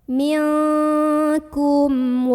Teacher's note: huruf mim nya ini dibaca dengan jelas bunyi am dan tidak perlu ditahan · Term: izhar syafawi